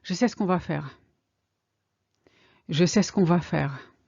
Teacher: The E of ce kind of disappear.